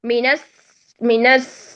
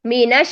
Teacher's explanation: اگر ہم تفشی ادا نہیں کرتے تو وہ سین کی طرف چلا جائے گا. مینس سیتون، مینس مینس شین تفشی نہیں دا ہو رہی، مینش یہ تفشی.